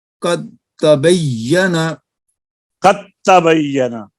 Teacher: دال کو اب تا سے مکمل بدل دیا، اب دال نہیں پڑھا جائے گا، قد تبین، اور چونکہ اس کے اندر شامل ہو گیا ہے تا کے اندر تو علامت کے طور پر تا کے اوپر شد آ جائے گی جی۔ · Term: ادغام